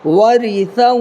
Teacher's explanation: ورثہ نہیں بولنا، کھینچنا نہیں ہے، ورثہ جلدی ادا کرنا ہے